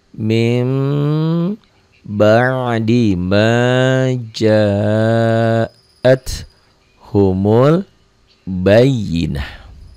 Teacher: illa min jadi mim, ini nun mati ketemu ba iklab